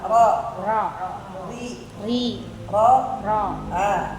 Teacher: Jadi ro yang penting ada getarnya dulu nih. Untuk tempat tikusnya nanti kebentuk sendiri kok.